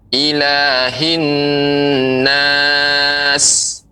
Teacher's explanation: Sinnya lebih diperbanyak, ya, lebih banyak desisnya. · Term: huruf sin